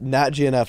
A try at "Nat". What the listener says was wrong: It's no. Nat, not. It's Nat. It sounded like, I feel like a lot of people probably thought you said not, but it's Nat.